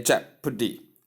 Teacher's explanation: The stress is given or the force is given at the first syllable. That is the stress force on the first syllable.